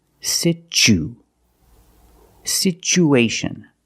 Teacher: So the second syllable is the long oo like boot and moon.